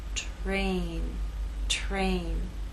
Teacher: And in this last word, T is voiceless. R begins voiceless and takes on a voiced sound as we move into A.